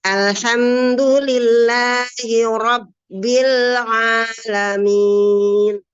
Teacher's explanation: rnya kita lentingkan ke atas supaya memberikan kesan tebal · Ro-nya tebal. Jangan tipis ya, jangan cempreng. Kalau cempreng itu ro-nya jadi biasa. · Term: rnya tebal